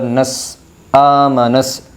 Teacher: حرف شمسی میں ہم نے پڑھا تھا کہ الف لام اگر حرف شمسی کے شروع میں ہوں تو الف اور لام کو نہ پڑھیں گے بلکہ بعد والے حرف سے ملائے گے، اور یہاں پر سین کے اوپر تشدید بھی ہے تو نون کو سین سے ملایا جائے گا، سیدھا نون سین زبر نس آمنس، الف اور لام کو چھوڑ دیا جائے گا کیونکہ الف اور لام خالی ہے۔